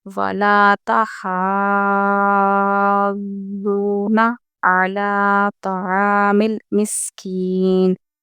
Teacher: ولا میں ہم لام کھینچیں گے کیونکہ یہ الف مدہ کے ساتھ ہے